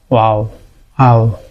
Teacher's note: আমাদের সবসময় সচরাচর যে ওয়াও যেটা এজ এ হরফ, এটার মাখরাজ হচ্ছে ঠোঁটে, ওয়াও উচ্চারিত হচ্ছে 2টা ঠোঁট ফুলের পাপড়ির মতো করে